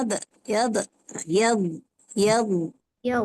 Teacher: Dad dia tak ada qalqalah